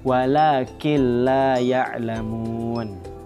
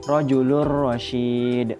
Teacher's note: Jadinya cara membaca idgham bilagunah ini adalah dengan memasukkan nun mati atau tanwin ke huruf yang berikutnya tanpa dengung